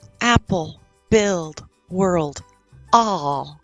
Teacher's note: then we have what we call the dark L and your tongue curves in the back